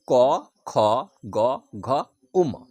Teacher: এই বর্ণগুলো উচ্চারণ করার সময় জীভের গোড়া গলার ভিতরের অংশকে কন্ঠকে স্পর্শ করে। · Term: ক বর্গ